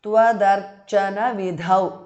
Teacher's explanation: The last dha is mahapranah